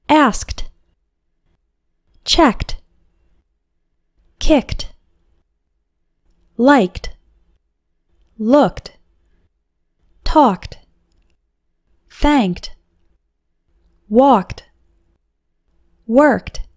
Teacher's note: pronounce Ed D like T after verbs ending with a k sound